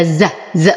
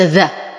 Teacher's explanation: وبعدها حرف الزاي فالحكم اخفاء مع غنه كامله كامله كامله انز احقق مخرج الزاي فهذا الز ز وليس ذا